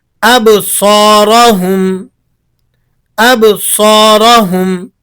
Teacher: اب صاد کے بعد الف مدہ ہے اور صاد حروف مستعلیہ میں سے بھی ہے، اسے آپ نے موٹا اور ایک الف کے برابر کھینچ کر پڑھنا ہے۔ اب سو را پر زبر ہے تو اسے آپ نے زبر ہونے کی وجہ سے موٹا کر کے پڑھنا ہے۔ · یہاں با پر جزم ہے، اس لیے یہاں آپ نے قلقلہ ادا کرنا ہے، یعنی آواز پلٹ کر آئے گی۔ اب صاد کے بعد الف مدہ ہے اور صاد حروف مستعلیہ میں سے بھی ہے، اسے آپ نے موٹا اور ایک الف کے برابر کھینچ کر پڑھنا ہے۔